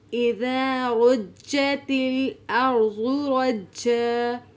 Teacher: اذا رجت الارض رجت، اذا میں الف مدہ ہے، رو کو موٹا پڑھیں گے، جیم پر تشدید ہے جسے شد بھی کہتے ہیں تو اس کو جماؤ کے ساتھ پڑھیں گے